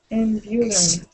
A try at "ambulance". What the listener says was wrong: that A at the end would be an E sound. Ambulance. Not lance, but lens.